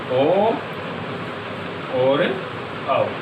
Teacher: कंठोष्टम से कौन से वर्णों का उच्चारण होता है? तो फिर ओ और औ। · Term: कंठोष्ठ